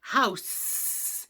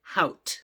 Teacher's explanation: If your child is stopping, your child would produce that word as hout. So instead of the air escaping through the S, house, your child is stopping that sound by saying hout.